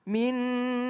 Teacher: nun tasydid, maka dia harus berdengung. Minna, tahan dulu.